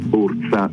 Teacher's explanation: quella S che non è sibilante ma diventa una z